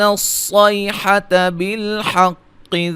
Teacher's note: صاد کو موٹا، قاف کو موٹا ادا کریں گے